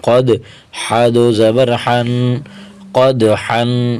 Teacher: حرف قاف کو موٹا کریں گے، قاف کی حرکت کو دال کے ساتھ ملائیں گے.